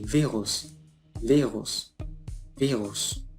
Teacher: adquiere el sonido de la V inglesa labiodental, es decir, V.